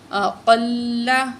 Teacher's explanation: اقل موٹا کر کے پڑھیں گے کاف کو